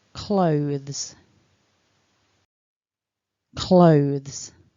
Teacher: you need to stick your tongue out a little bit and you need vibration in your throat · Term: voiced th